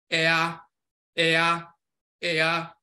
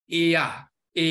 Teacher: When we put E and A together, Ea, Ea, Ea, this is where you get Ya from. When you say Ya, the Y sound is not just one sound. It's a combination of E and A, Ea, Ea. And this is where you get the Ya sound from.